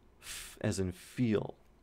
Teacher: So f is voiceless. It is labiodental, so it uses one lip and one tooth, or maybe two teeth. F, labiodental, and this is a fricative. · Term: voiceless labiodental fricative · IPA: [f]